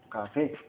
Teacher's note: Tiene dos sílabas y la acentuación va en la última sílaba y se tilda por lo que se termina en vocal.